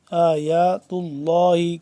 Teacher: لفظ اللہ کو موٹا کر کے پڑھیں گے، پر کر کے، کیونکہ اس سے پہلے تا ہے